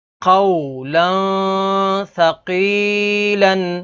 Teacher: ثا حروف اخفا میں سے ہے، تو یہاں پر اخفا یعنی غنہ کر کے پڑھیں گے